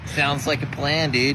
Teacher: Heavy on the vowels, got a bit of a drawl